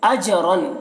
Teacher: جیم میں قلقلہ ہو رہا ہے